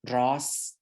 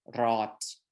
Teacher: words with final S and words with final T were pronounced the same